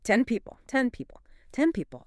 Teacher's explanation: The brain realizes that moving the tip of the tongue to the roof of the mouth for the N is a total waste of time and energy when the lips need to close anyway. >> So, it just skips the tongue movement entirely. · It closes the lips early and acoustically that N turns into an M. · my lips are closing to make the P in people before I've even finished saying the N in 10. Because the brain knows those lips need to close for the P. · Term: assimilation